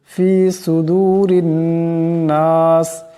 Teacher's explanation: এখানে এই রাকে পাতলা আওয়াজে পড়তে হবে